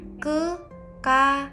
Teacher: Lalu pada suku kata ka, lalu suku kata ya, setelah vokal a itu ditambah konsonan glotal sebelum suku kata an